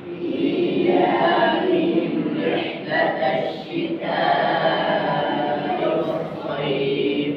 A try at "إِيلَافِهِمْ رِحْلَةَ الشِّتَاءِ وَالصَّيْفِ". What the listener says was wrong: हमजा को वाज़ेह करें।